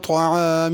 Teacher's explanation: طعام میں طا کو موٹا کر کے پڑھنا ہے، طعام تا نہیں پڑھنی، اور عین بھی صحیح ادا کرنی ہے، طعام نہیں پڑھنا، حمزہ نہیں پڑھنا۔